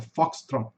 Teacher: Esse Tzinho assoprado, ele sai assoprado, ele não sai um T completo. Não é foxtrot T, nem foxtrot T, é foxtrot.